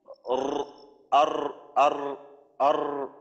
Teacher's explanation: অর্থাৎ র জবর র, এই রটা উচ্চারণ করে দেখেন যে জিব্বার আগা এমন হয় যে উপরের তালুর সাথে একটু বারবার সম্পর্ক হয়, অন্য অন্য হরফ উচ্চারণের সময় দেখা যায় যে মাখরাজের সাথে সম্পর্ক করার ক্ষেত্রে এইখানে একটা স্থিরতা থাকে, কিন্তু রর ক্ষেত্রে জিব্বার আগা একটু কাঁপে, আর আর আর এমন কাঁপা কাঁপির থেকে একটু বিরত থাকতে হবে।